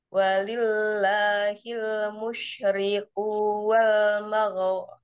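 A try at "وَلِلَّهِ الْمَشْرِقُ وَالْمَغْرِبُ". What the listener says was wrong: Bukan walillahil mas, bukan mosh. Walillahil masyriq wal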